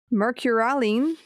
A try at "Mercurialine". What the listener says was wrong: You got to put the emphasis on the right syllable. That's the only problem.